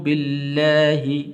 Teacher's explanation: لفظ اللہ کو بھی پر نہیں کرنا، باریک کر کے پڑھنا